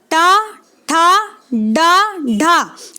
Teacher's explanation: आप इसमें गौर करेंगे दोस्तों, जब आप इसको बोलेंगे तो आपकी जीभ ऊपर की साइड जा करके भीतर की तरफ क्या होगी? फोल्ड होगी, पहले फोल्ड होगी और थोड़ा सा जो पिछला हिस्सा है जीभ का वो आपके ऊपर यानी कि तालव्य से टकरा जाएगा, ठीक है। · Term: मूर्धन्य ध्वनि